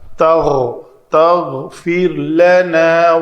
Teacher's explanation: غین کی آواز جو ہے یہ تھوڑی سی اوپر جو رگڑ لگتی ہے گلے کے تالو کے ساتھ